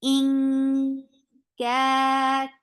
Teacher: the ikhfa is light, keeping your tongue straight and keeping sound in your nose. In ka 2 counts long.